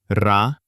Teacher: the hard R is energy, the vibration of the tip of the tongue